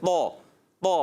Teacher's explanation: آپ کی زبان کی جڑ اور درمیان کا حصہ اوپر چلا جائے, تالو کی طرف چلا جائے, تو آپ پڑھیں گے موٹا منہ بھر کے طا